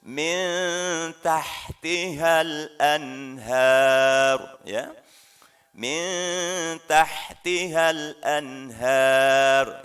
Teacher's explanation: lidah kita ketika mengucapkan Nun atau tanwin lidah kita tidak nempel renggang ya mengambang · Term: disamarkan